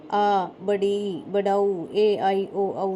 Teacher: जिन स्वरों के उच्चारण में ह्रस्व स्वर से दुगना समय लगता है उन्हें दीर्घ स्वर कहते हैं